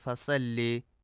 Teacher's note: فصل میں صاد کو سین پڑھا جاتا ہے فصل، جو کہ درست نہیں ہے۔